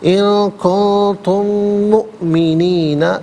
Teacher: حمزہ ساکن ہے تو حمزہ کو جھٹکے کے ساتھ ادا کیا جائے گا